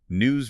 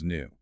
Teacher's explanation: requires pulling the corners of your lips back to vibrate that S into a Z. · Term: buzzing Z sound